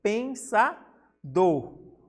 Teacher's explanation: Então, pensador é um oxítona, porque o do, que é a última sílaba, ela é a mais forte.